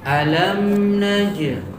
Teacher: ini tadi mim mati ketemu dengan nun. nakisah, ada gunnahnya tetapi tidak boleh dipanjangkan